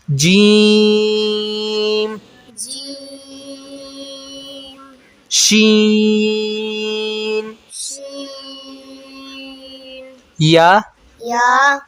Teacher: जीम शीन और या का मखरज ज़ुबान का दरमियान जुबान का दरमियान जब ऊपर के तालु से लगे जब ऊपर के तालु से लगे तो तो जीम जीम शीन शीन या या अदा होते हैं।